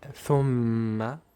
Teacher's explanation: The word thumma, the meem has shadda, so you apply ghunnah for two beats